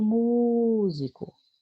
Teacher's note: Por exemplo, olha o músico. Onde foi que eu segurei mais? Mu. Então, a sílaba tônica dela é mu.